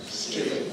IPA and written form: striːt (street)